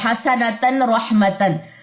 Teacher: آگے حسنتن کے بعد را ہے تو ہم نے یہاں پہ غنہ کرنا ہی نہیں ہے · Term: اظہار